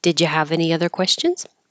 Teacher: it's a yes no question it'll go up